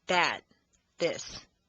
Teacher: the voice th is like a d except that the tongue is placed between the teeth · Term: voiced TH